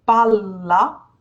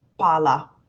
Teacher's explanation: We do not in Italian, but we pronounce the L sound for longer.